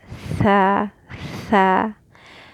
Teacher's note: It's still outside of the teeth, the tip of the tongue, but it's pushed down again because it's not heavy. And you kind of like barely press it against the teeth when you say it, and you add more air because when you compare the characteristics, this one has a whisper.